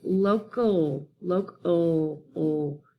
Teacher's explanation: So that schwa sound is in the second syllable, which would be the unstressed syllable